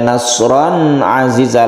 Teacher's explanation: disebut izhar jelas dan terang itu tidak berdengung